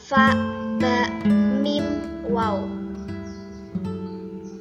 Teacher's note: Ada 4 huruf yakni fa, ba, mim, waw. Jadi al-syafatain itu dua bibir. Tempatnya keluar huruf itu di dua bibir.